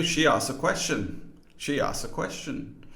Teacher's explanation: the final consonant cluster, kst, which is a bit of a mouthful and often just gets dropped